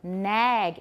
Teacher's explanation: A short front vowel followed by a voiced velar sound. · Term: velar raising